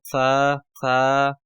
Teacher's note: زبان کی نوک کو ثنایا الیاء جو اوپر والے دو ثنایا ہیں ان کے سرے سے لگانے پر جو ہے سا ادا ہوتا ہے